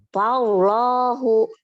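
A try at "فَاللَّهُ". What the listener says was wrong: Orang ditegangin lagi siapanya tuh namanya ya? Si lidahnya. Lidahnya.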